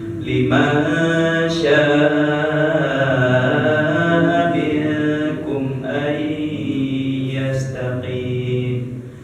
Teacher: ketika ada mad asli ya bertemu dengan hamzah dalam satu kata ya itu adalah mad wajib mutasil maksimal panjangnya 5 harokat